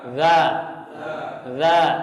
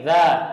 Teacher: huruf dha itu keluar seperti hanya zal dan tha. Cuman bedanya pangkalnya naik.